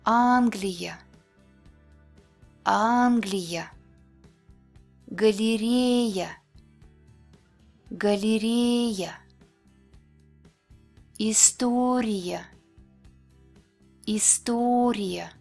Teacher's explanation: Unstressed Е and Я sound like Е. Shorter and less clear than Е. Е. It appears in an unstressed syllable at the end of the word. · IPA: [yə]